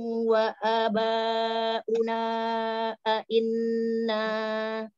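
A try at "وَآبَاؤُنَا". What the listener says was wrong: afan wa wa abaanya enggak dibaca panjang wa aba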